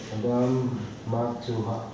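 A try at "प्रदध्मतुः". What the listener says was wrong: Matuhu. Matuhu. No, it's U. In the Sanskrit, it's U.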